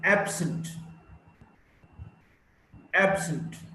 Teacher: Now, if it's an adjective, absent, absent, stress is on the first syllable, ab.